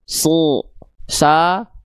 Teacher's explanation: karena pangkal lidahnya naik, bunyi vokal a-nya kehalangin jalur keluarnya sehingga bunyi outputnya jadi e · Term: huruf tebal